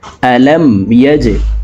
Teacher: ইয়া জিম জবর ইয়াজে, জিম কলকলার হরফ নিচের দিকে ধাবিত করে ধাক্কা দিয়ে উচ্চারণ করব। আলম ইয়াজে, আইন লাম জবর আল, আলম ইয়াজে আল।